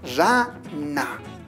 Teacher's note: ¿Te diste cuenta que cuando pronuncias la palabra rana, la punta de la lengua se sitúa sobre los dientes? Es decir, colocamos en esta parte.